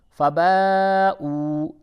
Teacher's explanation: مد زبر با، حمزہ واو پیش او، فباؤ، یہ مد ہے، مد متصل، اسے تھوڑا کھینچتے ہیں ، اور یہ واو مدہ ہے، اسے بھی تھوڑا کھینچ کے